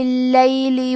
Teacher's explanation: کلمت اللیل میں حرف اللام کو 2 حرف کے برابر پڑھنا ہے، کیونکہ اس پہ تشدید ہے